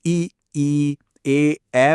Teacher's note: जब हम इ ए बोलते हैं तो जीभ का अगला हिस्सा एक्टिव होता है